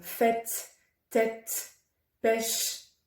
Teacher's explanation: Quand l'accent circonflexe est situé sur un E, il se prononce comme un accent grave, est, ouvert.